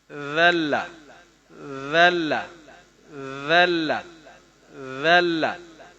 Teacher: زبان کی نوک اوپر سامنے والے دو دانتوں کے کنارے سے ادا ہوتا ہے، جی جناب جہاں سے سا ادا ہوتا ہے، سا اور اس کا زال کا اور زو کا مخرج سیم ہے، ذلہ ذلہ ذلہ ذلہ، نرم ہوگا ذلہ، ٹھیک ہے۔